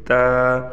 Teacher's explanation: تا کو تھا نہیں پڑھنا، تا بالکل زبان کو سامنے کے اوپر کے دانتوں میں لگا کر پھر ہم نے ادا کرنا ہے تا۔ · وہ گوشت جہاں پر ختم ہوتا ہے اور اس کے بعد دانت شروع ہوتے ہیں، وہاں پر زبان کی نوک لگنے سے تا ادا ہوگا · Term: تا کا مخرج